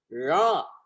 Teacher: நாவை மடக்கி சொல்றோம், ழகரம்னு சொல்றோம். மடக்கிட்டு நா திரும்பினால் மேலெண்ணத்தை தொடும், ழ என்று தொடும்.